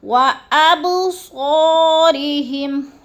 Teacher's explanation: جیسے بِسَمْعِهِمْ وَأَبْصَارِهِمْ، وَأَب پہ قلقلہ ہے، با ساکن ہے اور حروف قلقلہ میں سے ہے تو اس کو ہلا کے پڑھنا ہے۔